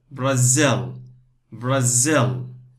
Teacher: Two parts, the stress on the second part.